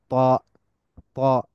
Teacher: same এস তা but with তাফকিম the tongue is slightly raised জিহ্বাটাকে একটু উঁচু করে ফেললেই তাফকিমটা হয়ে যাবে এবং মুখকে একটু